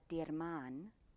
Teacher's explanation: so the r flips cleanly into the m both are voiced sounds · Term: flipped r